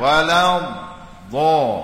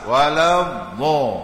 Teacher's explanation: Letak lidah kita di geraham gigi, atas ke bawah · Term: istitalah